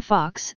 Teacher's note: in most dialects of British English it is either an open mid back rounded vowel or an open back rounded vowel in American English it is most commonly an done rounded back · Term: short Oh